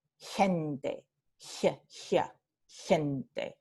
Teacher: en Chile se pronuncia como palatal